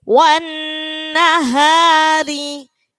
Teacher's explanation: Wan nahari. Roknya tarkik karena kasro. Jadi dibaca tipis.